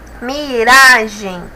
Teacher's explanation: Miragem ra é a sílaba mais forte